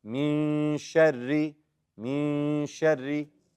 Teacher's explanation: The ikhfa, and make the ra light.